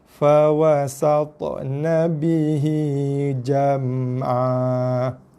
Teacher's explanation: oleh kerana kita waqaf di sini, maka daripada an jadi a dan panjangnya 2 harakat